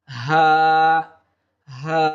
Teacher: হলকের শুরু হইতে যে হরফটি আসে সেটি হচ্ছে হা